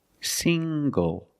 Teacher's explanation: The ng makes the nasal ng sound plus the hard g.